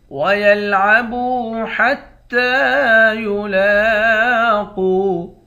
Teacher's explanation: تا پر کھڑا زبر ہے، کھڑے زبر کو ایک الف کے مقدار کھینچ کر پڑھتے ہیں۔ · با کو واو کے ساتھ ملا کر واو کو ایک الف کے مقدار کھینچیں گے، واو حروف مدہ ہے۔